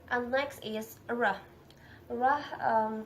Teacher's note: Rah, place of articulation palato-alveolar or post-alveolar, and then manner of articulation approximant